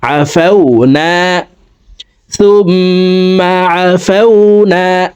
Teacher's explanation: এখানে ওয়াজিব গুন্না 3 সেকেন্ড পরিমাণ গুন্নাহ করে পড়ব